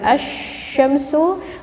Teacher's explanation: ketika kita menghadapi alif lam syamsiah misalkan as Syamsu matahari filmnya tidak nampak terdengar oleh kita karena dimasukkan kepada huruf Sin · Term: alif lam syamsiyah